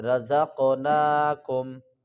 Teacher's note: رزق قاف کے اوپر قلقلہ بھی کریں گے